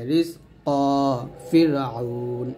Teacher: র সাকিনের ডাইনে জের হলে র সাকিন পাতলা হবে